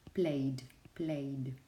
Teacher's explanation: the ending will be pronounced with the voiced dental sound, with a d, played, played.